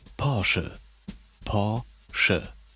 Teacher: The traditional German R comes from the back of the throat